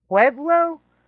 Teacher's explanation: I pronounced it like it had a W and it doesn't.